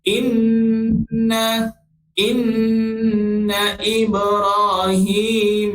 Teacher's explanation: inna ini wajibal gunnah, wajib kita dengung 2 harakat